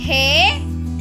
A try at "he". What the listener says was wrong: ஹேன்னு நீட்ட கூடாதுமா.